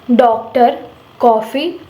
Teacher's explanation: इसे आ तथा ओ के बीच की ध्वनि से बोला जाता है। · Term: अग्रहित स्वर